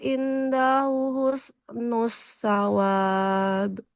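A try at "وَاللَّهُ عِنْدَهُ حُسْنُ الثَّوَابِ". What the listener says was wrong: Haknya dipanjangkan. Kalau huruf sa, dia ujung lidah ke ujung gigi seri atas. Husnus sawab. Sa. husnus sawab. Coba huruf sa-nya Ibu. Sasisu. Jadi huruf sa-nya hati-hati jangan seperti kesin Ibu ya. Tidak sa, tapi sa. Ditempelkan ujung lidahnya ke ujung gigi seri atas. Kemudian, hati-hati untuk harokatnya, Ibu ya.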